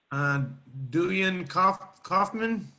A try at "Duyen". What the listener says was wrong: It's actually pronounced Zuen. The D is like a Z in Vietnamese, but thank you for asking.